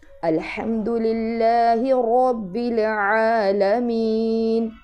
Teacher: مین میں یا مدہ آ گیا تو یہاں اس کو لمبا کریں گے · را موٹا پڑھیں گے اور عین حلق کے درمیان والے حصے سے ادا کریں گے اور لمبا بھی کریں گے۔